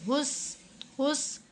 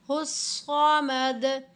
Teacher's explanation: हा को स्वाद के साथ मिलाते हुए हुस, सीटी की आवाज़ नहीं देनी।